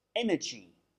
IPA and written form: ˈenədʒi (energy)